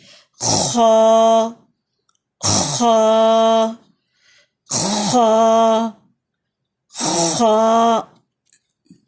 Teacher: یہ heavy letter ہے، بلندی کی طرف جائیں گے. خا خراش جہاں سے آتی ہے اپر پارٹ آف تھروٹ وہاں سے نکلے گا. خا خا الف کے ساتھ اس کی ادائیگی ہوگی.